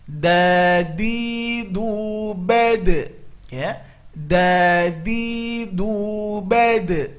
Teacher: ini ujung lidah tempelkan ke usul ats-tsana al-ulya. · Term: huruf da